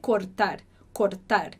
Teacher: esse som do r no meio das palavras ele vai ser mais fraco então a gente não diz cortar a gente não precisa vibrar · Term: Rzinho muito fraco